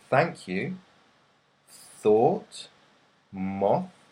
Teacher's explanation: you won't feel any vibration in your vocal cords